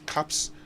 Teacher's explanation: not with a z at the end because p is actually a voiceless sound